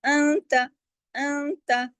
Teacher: نون ساکن کے بعد تا ہے، اخفا حقیقی غنہ کاملہ · رب موٹا پڑھا جائے گا، کیوں؟ زبر کی وجہ سے، فتح کی وجہ سے